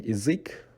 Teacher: But in язык, which is language in Russian, because the stress sound is on ui, so ya de-stresses and becomes i